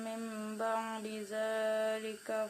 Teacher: huruf dal tidak diidghamkan ke dalam zal